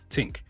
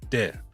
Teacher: the th can become a t or d. Take a word like think, you may hear tink.